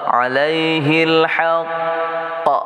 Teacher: Kalau kita waqaf di sini enggak cukup nafas, maka qaf ini menjadi qalqalah akbar.